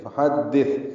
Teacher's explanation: ہا کو وسط حلق سے ادا کریں گے، دال سے ملائیں گے، دال کو تا سے ملانا ہے، یہ سین نہیں پڑھنا.